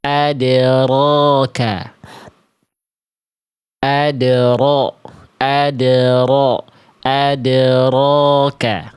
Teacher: Jadi enggak dibaca adroka ataupun adroka, tapi getarannya sedikit saja tapi tetap jelas. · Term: takrir